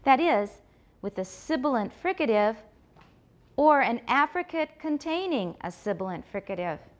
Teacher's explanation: pay attention to the difference in the amount of stress I put on Africa compared to containing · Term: tonic stress